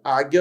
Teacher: sua boca abriu. Aí o nariz não treme.